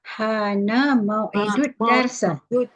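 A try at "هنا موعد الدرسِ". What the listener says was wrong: Kalau barisnya darsi, ya. Hana mau'idud darsi. Kalau kita matikan dars boleh. Hana mau'idud dars.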